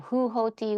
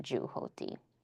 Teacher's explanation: the ha is replaced by ja. So in this particular situation, the ha is replaced by ja.